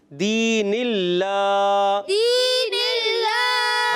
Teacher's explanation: اللہ پاک کے لام سے پہلے زیر آئی تو یہاں اللہ پاک کا لام ہم نے باریک پڑھنا ہے